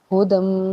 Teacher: میم مشدد ہونے کی وجہ سے یہاں پہ ہم غنہ کریں گے